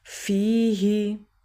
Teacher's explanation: یا سے پہلے فا کے نیچے زیر ہے تو یہ یا مدہ ہوا، 1 سیکنڈ کے لیے لمبا کریں گے